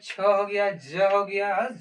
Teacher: अगर हम चौ बोल रहे हैं तो मेरा जीभ ऊपर की ओर हटता है यानी तालू में